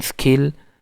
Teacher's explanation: in skill the native speaker will not aspirate it